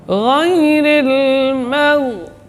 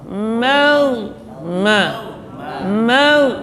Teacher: Kemudian gha, rakhawah dan jahar. Di sini mimnya tipis, yang tebal huruf gha karena sebelumnya fathah.